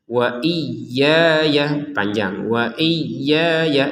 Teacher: Kalau ya yang pertama memang ada tanda panjang yaitu alif kecilnya, ini kita panjangin 2 harokat. Kalau ya yang kedua kan nggak ada tanda panjang, nggak ada alif kecilnya sehingga kita langsung ke fa.